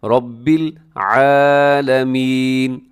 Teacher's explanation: یہاں را کے اوپر حرکت آ گئی ہے تو را کو آپ نے خوب موٹا پڑھنا ہے